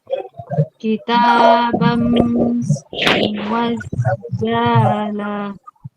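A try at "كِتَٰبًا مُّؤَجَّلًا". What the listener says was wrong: Pendek. Yang jimnya mu'ajjala. Langsung diidghamkan.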